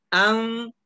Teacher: ketika kalau dalam membaca, huruf N ini hampir tak terdengar secara jelas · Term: ikhfa